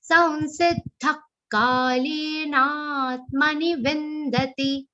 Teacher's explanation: Samsiddha. Again, anuswar will be pronounced like a nasal va consonant